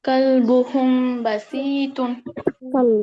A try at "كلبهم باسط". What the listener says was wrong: বাসিতুন হবে না আপু, বা এর মধ্যে একটা লিফ নেন। বা আলিফ জবর বা। كلبهم كلبهم باسط كلبهم باسط أبا أبا